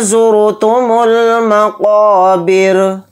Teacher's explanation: قاف کو یہاں پر موٹا پڑھیں گے، قاف کے ساتھ الف مدہ ہے تو قاف الف زبر قا کو تھوڑا کھینچ کر پڑھیں گے، پھر را کو ساکن کر دیں گے آیت ہونے کی وجہ سے، حالت وقف میں را ساکن ہو کر پڑھا جائے گا، اور را جب ساکن ہوگا تو را یہاں پر باریک پڑھا جائے گا کیونکہ را ساکنہ سے پہلے زیر آ چکا۔